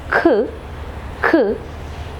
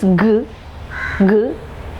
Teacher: we use the back part of the tongue touching the soft palate in order to produce the velar sounds. So the active articulator, again tongue is moving, so tongue is the active articulator, soft palate is the passive articulator.